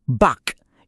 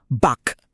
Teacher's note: Kapag ang mga letrang kyok, kyok or k ay nasa dulo ng isang syllable, lahat sila iisa lang ang bigkas. Nagiging isang matalas na K stop sound. Parang pinipigilan mo yung hangin.